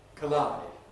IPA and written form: kəˈlaɪd (collide)